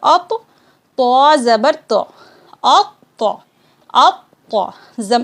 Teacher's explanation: जिस तरीके से हम तो साकिन को पढ़ते थे, हमज़ा क़ा ज़बर अत, इसी तरीके से इसको हिज्जे करते वक्त पढ़ेंगे, हमज़ा क़ा ज़बर अत, फिर क़ा ज़बर ता। ता को जो है 2 मरतबा पढ़ेंगे क्योंकि इसमें तशदीद लग चुकी है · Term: तौ मुशद्दद